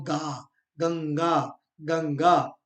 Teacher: आधा न का उच्चारण हो रहा है नासिक ध्वनि है